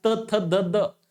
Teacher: त्यानंतर आहे दंत्य, ज्याला आपण दात म्हणत असतो. म्हणजे जे वर्ण आपण उच्चारत असतो तर आपली जीभ दाताला भडकन लागते बघा